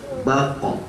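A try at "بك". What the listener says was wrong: Ini bako kelamaan, bako.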